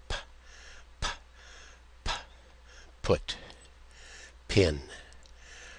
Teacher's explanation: So, you're using both lips, stopping the sound, and then letting it loose, but not using your voice box. Voiceless. P Pin. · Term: aspirated P